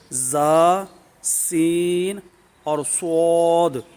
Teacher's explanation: یہ سیٹی والے حروف ہیں، ان کو ادا کرتے ہوئے سیٹی کی آواز ہے، ان کو حروف صفیریہ بھی کہتے ہیں، یعنی سیٹی والے حروف۔